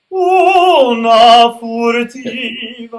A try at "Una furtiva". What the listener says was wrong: Because you're collapsing a little bit on the low note. Well, you think on the portamento that the vowel stays exactly intact.